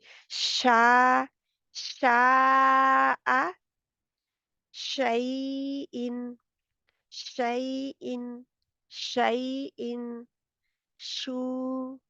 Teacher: दरमियानी जुबान का दरमियान ऊपर के दरमियानी तालू से लगता है लगता नहीं है जाकर बिल्कुल करीब आ जाता है इसीलिए तो · इसमें सीटी नहीं पाई जाती इसमें आवाज फैलती है जब वो फैले गी तो टाइम लग रहा है ठीक है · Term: शीन